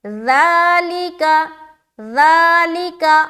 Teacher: ذال کو نرمی کے ساتھ کھینچتے ہوئے نکالیں گے، بہت ہی نرمی کے ساتھ بغیر سیٹی کے